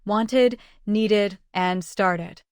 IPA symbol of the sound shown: ɪd